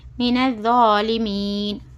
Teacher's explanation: آیت ختم ہونے کی وجہ سے نون کے پر سکون دے کر اپنے کو سانس ٹکانا ہے